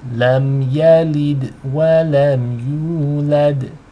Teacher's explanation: Make sure you have u being twice as long, and the dal has qalqala. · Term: elongation